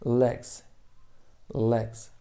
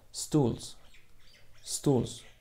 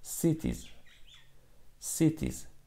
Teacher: ҳарфи s дар охири калима пас аз ҳамсадоҳои ҷарангдор ва садонокҳо z хонда мешавад